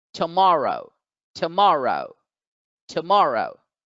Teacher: Here, the second syllable has the stress mark, the apostrophe. So the second syllable gets accented. It gets stressed. It gets elongated.